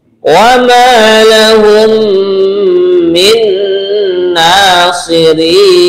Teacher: di sini dua yang kita dengungkan yaitu idgham mislain, mim mati bertemu dengan mim. Kemudian yang kedua nun mati bertemu dengan nun ya.